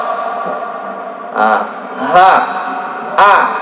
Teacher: Ha sama hamzah itu dari halqiyah, dari tenggorokan. Aqsal halqi tenggorokan bagian dalam atau bawah.